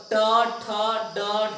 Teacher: अब देखिए, मूर्धा से उच्चारण टवर्ग